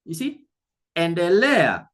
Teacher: where there is the second last syllable, I'm going to put a stress there.